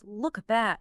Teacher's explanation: Especially when a word ends with a consonant sound and the next one starts with a vowel like look at that often becomes look at that because the K sound blends right into the A.